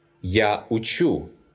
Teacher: In the first person singular, pronoun «я», «I», the stress falls on the ending. But in all other forms, the stress shifts back one syllable and falls on the stem. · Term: variable stress